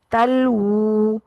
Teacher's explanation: वाऊ को अदा करना है गोल करके होठों को गोल करके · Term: वाऊ मद्दा